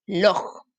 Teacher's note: ¿Dónde cargo la voz? En la última, ¿cierto? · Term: sílaba tónica